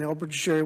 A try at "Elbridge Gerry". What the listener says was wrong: I know him very well because that's not even how you pronounce his name. It's a hard G. It's pronounced.